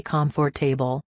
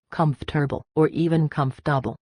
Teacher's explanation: But in the US, we eat our words. We squash it down to three or sometimes even two syllables.